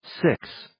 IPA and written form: sɪks (Six)